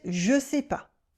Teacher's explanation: First, the ne disappears, as always.